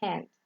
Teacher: We have H, that is voiceless, glottal, fricative, example hand.